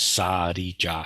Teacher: the actual consonant, the sound in Chinese, Korean, and Japanese is neither R nor L as pronounced by English speakers